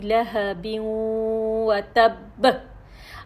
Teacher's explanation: اب ہم نے مشدد ہے، سب سے پہلے ہم نے مشدد کو پکڑا، پھر یہ ہم نے اس کو وقف کیا، مشدد کو پکڑا، پھر آخر میں ہم نے قلقلہ ادا کیا